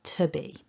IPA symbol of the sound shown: ə